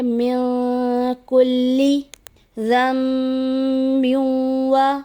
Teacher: نون ساکن کے بعد کاف ہے تو یہاں اخفا کا قاعدہ ہوگا، اخفا کا معنی ہے ادھورا غنہ